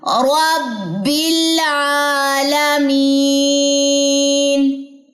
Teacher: یہاں پہ آپ نے جھٹکا نہیں دینا، ربل نہیں کرنا